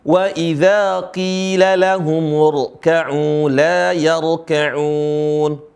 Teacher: Huruf ra di sini dibaca tebal.